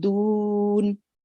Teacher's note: No, it shouldn't really you shouldn't really make a nasal sound at the do, although it is really easy to make because the next letter is a noon, so you should really be saying doon. So you shouldn't really make the nasal sound on the do.